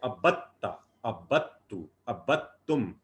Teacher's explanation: با جا کے تا سے مل رہا ہے تشدید بنا کے، ابدتا، ابدتو، ابدتم، دال بالکل نہیں پڑھا جا رہا. · دال بالکل نہیں پڑھا جا رہا. وہ عربی کا کلیہ ہے، تشدید کی وجہ سے آپ جزم کو ہضم کر جاتے ہیں.